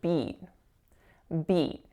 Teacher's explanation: that vowel, again, is that moving E that we've seen a few times today, like in the word sweet. So make sure it's not pure. It's got to move a bit.